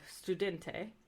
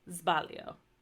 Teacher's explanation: if it's between a vowel or before a voiced consonant it's said more like a z